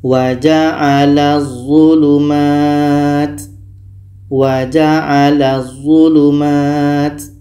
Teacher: Bunyi La ini terus masuk ke d dan di sini tidak boleh dengung kita baca wa'alzulumat waalulumat bunyi la masuk ke d dan tidak · Bunyi la masuk ke za dan tidak boleh dengung. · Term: Idgham Syamsiah, idgham syamsiyah